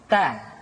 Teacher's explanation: huruf ta keluar dengan menyentuhkan ujung lidah kita dengan gusi-gusi gigi seri bagian atas ta kemudian huruf ta ketika diucapkan terdengar ada nafas yang mengalir